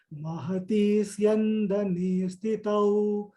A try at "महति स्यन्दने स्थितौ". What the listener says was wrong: Only thing is Mahati Syandane. If you stop here a little bit, then it will become Mahati Syandane. So that meaning itself will change. So you must pronounce it Mahati Syandane.